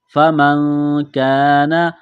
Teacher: میں آواز چھپانے کو اخفا کہتے ہیں، فَمَنْ كَانَ آگے دیکھیں نون ساکن ہے اس کے بعد کاف ہے، حروف اخفا ہے، غنہ کریں گے، آواز ناک میں چھپائیں گے